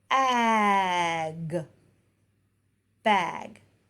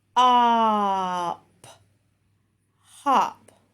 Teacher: just make sure they clip those sounds and they're not adding the schwa to those words. So in these words, you're going to have a stop sound, continuous sound, and then another stop sound. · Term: stop sounds